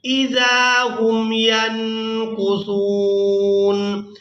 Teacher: یعنی نون کی آواز کو ناک میں چھپا کر ادا کریں گے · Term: اخفا